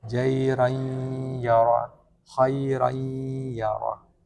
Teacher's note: Idgham bi gunnah, masuk dengan mendengung. Huruf-hurufnya adalah waw, ya, waw, mim, nun.